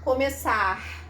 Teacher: Eu posso fazer um R mais aspiradinho